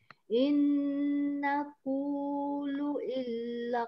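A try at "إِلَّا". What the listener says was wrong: Ainnya jangan lari ke tempat lain. Illa. Ain tengah-tengah. Illa qataraka ba'du alihatina.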